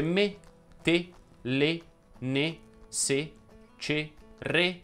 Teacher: I monosillabi richiedono una pronuncia della E chiusa.